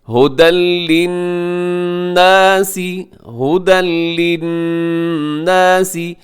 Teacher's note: ہدن پہ تنوین کے بعد لام ہے، یہاں ادغام تو ہوگا لیکن بغیر غنے کے